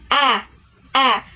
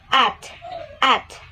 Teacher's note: ash without a macron sounds like this. A. So the mouth is wider, and its example is at.